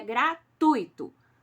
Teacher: Tá errado, gratuito. A palavra gratuito não tem acento no i e tampouco se fala com a sílaba tônica do i.